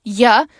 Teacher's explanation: the voiced palatal non-sibilant fricative